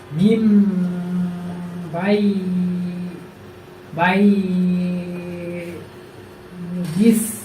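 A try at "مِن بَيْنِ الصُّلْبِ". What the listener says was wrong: ওই যে তুমি কিন্তু এমনি পড়া সঠিক আছে, কিন্তু দেখা যায় যেখানে মাদ দেয় সেখানে তোমার একটু মাদ হয়ে যাচ্ছে, ঠিক আছে, যেখানে মাদ দেয় সেখানে মাদ করা যাবে না। মিম বাইনিস সুলবি, মিম বাইনিস সুলবি।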